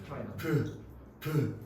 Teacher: 친구들 파열음 알잖아. 공기가 나가면서 통로를 막았다가 터트리면서 내는 소리 파열음